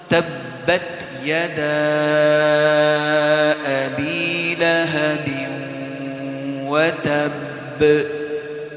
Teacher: تو سب سے پہلی آیت تبت یدا ابی لہب وتب، اس آیت پر وقف کرتے ہوئے ہم اس بات کا خیال رکھیں گے کہ جس حرف پر ہم وقف کر رہے ہیں اس پر شد بھی ہے، اور ساکن کی حالت میں اس پر قلقلہ بھی کریں گے، یعنی آواز کو ہلا کر پڑھیں گے۔ تو انتہائی توجہ کے ساتھ تبت یدا ابی لہب وتب، اگر ہم اس کو یوں پڑھ دیں وتب، تو اس میں ہم نے شد کی ادائیگی نہیں کی تو یہ غلط ہو جائے گا، لہٰذا اس کو توجہ کے ساتھ دوبارہ پھر پڑھیں گے۔